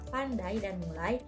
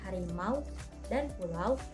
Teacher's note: gabungan dua vokal dalam satu suku kata yang diucapkan secara meluncur. Ciri-cirinya ada pergeseran posisi lidah dan diucapkan dalam satu hembusan napas. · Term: Diftong